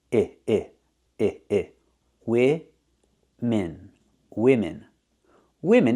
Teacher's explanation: both vowels are the same we're using the I sound